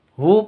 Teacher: hu panjang dua ketuk Kenapa karena ada damah kebalik ini domnya kebalik makanya dipanjangkan dua